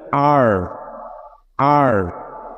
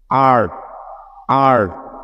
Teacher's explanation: তারপরে হচ্ছে আর, আর। যখন আর বলছেন তখন যেন আপনার জিহ্বাটা ভিতরে ফোল্ড হয়ে রাউন্ড হয়ে থাকে।